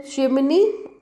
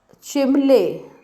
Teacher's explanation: That's a chimney and chimley with change of n and l. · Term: dissimilation